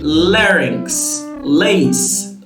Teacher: you're touching your alveolar ridge with the blade of your tongue but air still escapes through the side parts of your mouth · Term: lateral approximant